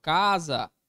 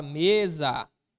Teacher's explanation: a sílaba tônica ocupa a penúltima posição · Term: paroxítonas